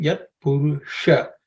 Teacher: Purusham is the cerebral sha.